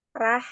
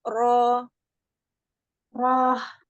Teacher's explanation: Roknya tebal, jangan Rah, rohnya tafkhim. Nashroh, rohnya tebal. Ro angkat pangkal lidah.